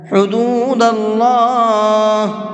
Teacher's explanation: اللہ کے نام کو منہ بھر کے پڑھیں گے، اس لیے کہ اللہ کے نام سے پہلے زبر ہے، اور تجوید کا یہ رول ہے اللہ کے نام سے پہلے زبر ہوتا ہے تو اس اللہ کے نام کو منہ بھر کے پڑھتے ہیں۔